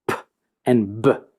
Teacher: Those are sounds that just occur once, but they cannot be stretched out. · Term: Stops